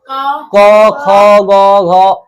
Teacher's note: ये जो क ख ग घ अ ङ है इसका उच्चारण स्थान हो जाएगा कंठ